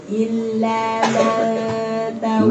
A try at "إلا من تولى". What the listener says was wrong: Man salah. Man apa salahnya tadi namanya? Tamtid atau isba' itu melahirkan huruf mad. Man tawat salah. Illa man langsung masuk. Jangan man salah.